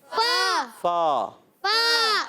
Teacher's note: فاولا. فاولا میں فا کا مخرج اوپر والے دانتوں کے کنارے جب نیچے والے ہونٹ کے تر حصے سے لگتے ہیں ادا ہوتا ہے فا.